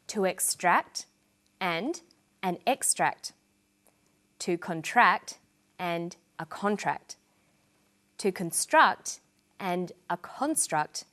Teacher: this pattern of first syllable emphasis for the noun form and second syllable emphasis for the verb form is repeated with other words